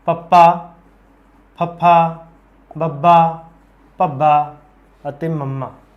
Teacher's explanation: इन्हां नूं जदों आपां बोलने हैं तो अपने बुल आपस में जुड़ते अते खुलते हैं, इस करके इन्हां दा नाम है होठी व्यंजन।